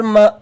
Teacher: یہاں پہ دیکھ لیجئے، یہ حمزہ کے اوپر جزم ہے تو حمزہ ساکن کو جھٹکا دے کے پڑھیں گے